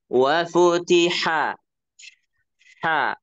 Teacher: dari tenggorokan tengah ya